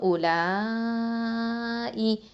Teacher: உலா இ அப்படின்னு நம்ம வந்து 4 இல்லைன்னா 5 ஹரக்கத்தை நீட்டுவோம் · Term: மதல் வாஜிபல் முத்தசில்